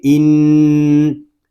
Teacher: حمزہ نون زیر ان، نون میں شدد ہے، اس کو غننے کے ساتھ ہی پڑھیں گے، اس کو ان اس طرح نہیں پڑھیں گے، اس کو پڑھیں گے ان۔